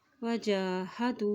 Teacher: जीम के ऊपर खड़ी ज़बर है तो इसको एक हरकत लंबा अदा करेंगे